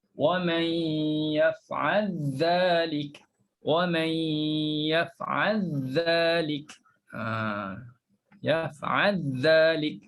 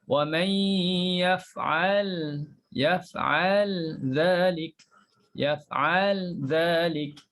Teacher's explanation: Jadi di sini dia masukkan lam dalam zal.